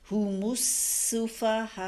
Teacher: میم پہ جو ہونٹوں سے ادا ہوتا ہے. جب ہونٹوں کو بند کرتے ہیں دونوں ہونٹوں کو ملاتے ہیں تو میم ادا ہوتا ہے, اور گول ہونٹوں سے ملا کے تو نہیں پڑھا جا سکتا میم.